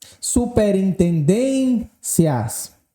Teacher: Tonicidade recaindo sobre a penúltima sílaba, tornando a palavra uma palavra paroxítona.